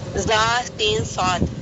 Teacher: زا سین صاد اس لیے کہ ان کے ادا کرتے وقت ایک تیز آواز سیٹی کی طرح نکلتی ہے. صفیر کے معنی ہے سیٹی. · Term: صفیریہ